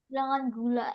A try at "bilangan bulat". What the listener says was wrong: bulat, bulat, bukan gula.